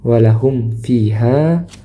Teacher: Nah, di sini ada mim sukun bertemu dengan huruf fa, maka dibaca izhar mim sukunnya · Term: Izhar syafawi